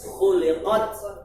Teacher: taknya ada unsur desis pada akhir